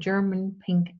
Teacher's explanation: It's a short high front vowel